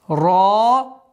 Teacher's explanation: Твердое произношение ра с долготой в размере 2 огласовок.